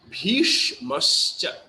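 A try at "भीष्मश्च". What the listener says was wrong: Yeah, first S, the tongue will be rolled up like as in sharp. So Bhishmascha.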